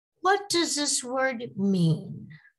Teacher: my voice falls at the end of the question